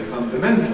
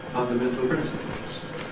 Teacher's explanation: Although in isolation we say fundamental, you hear the nucleus on mental. When the word comes in a context that's followed by a strong stress after it, you seem to have got a switch in the stress pattern of fundamental, and you get fundamental principles.